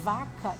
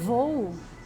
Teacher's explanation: se eu falo vaca, eu tenho que abrir meus lábios, mas se eu falo voo, eu tenho que fazer o quê? Um bico com os meus lábios